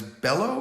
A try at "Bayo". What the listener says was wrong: Bayo. Two L's in it. 2 L's in Spanish is with a Y.